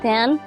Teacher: A full description of the t sound at the beginning of the word, like ten, is as a voiceless alveolar stop.